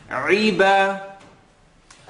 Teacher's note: I want you to allow the ayn to have an e sound.